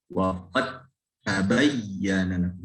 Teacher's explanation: Huruf dal yang tidak punya sifat hamas itu berubah menjadi huruf ta. Yang tadinya qalqalah karena melebur dengan ta. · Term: diidghamkan